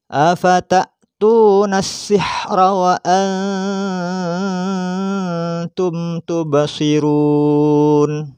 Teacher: Memasukkan suara nun mati pada ta disertai gunnah, karena ta tidak termasuk huruf yang 6, hamzah, ha, ain, uin, ha, kho, dan juga lam, ro. Maka harus memasukkan suara nun mati pada ta disertai dengan dengung